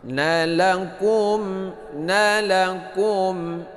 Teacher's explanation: Mim mati bertemu dengan mim. Ini idgham mimmi